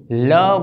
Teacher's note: आ व्यंजन ने उच्चारती वखते जीभ दाँत ने स्पर्श करीने तरत छूटी पड़ी जाए छे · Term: पार्श्विक व्यंजन